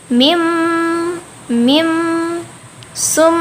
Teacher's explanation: Tepatnya gunnah musyaddadah. Karena ada huruf mim yang bertasydid, maka cara bacanya didengungkan. Jadi sampai kerasa ke hidung.